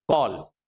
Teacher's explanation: और जब कॉल बोलते हैं तो दोनों तरह का थोड़ा वाइड स्प्लिट भी करता है, गोल भी होता है और जीभ जो है आधी ऊपर जाकर रुक जाती है तब जाकर के आप ये उच्चारित कर पाएंगे कॉल। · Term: आगत स्वर